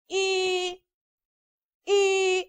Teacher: the vowel sound E is a long front close spread vowel sound